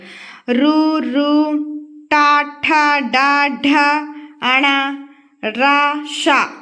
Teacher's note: నాలుకతో పలికేవి మూర్ధన్యాలు నాలిక అంగిలికి టచ్ అవుతూ పలుకుతాం అన్నమాట వాటిని చూడండి నాలుకతో గట్టిగా అంగిలిని తాకుతూ మన నాలుక పైన ఉన్న అంగిలిని తాకుతూ పలికితే వాటిని మూర్ధన్యాలు అంటారు